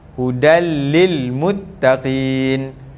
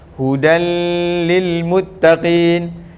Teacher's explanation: dia masuk Idam tapi tidak dengung Hudan Lil Muttaqin macam tu dia tidak berdengung kalau berdengung dia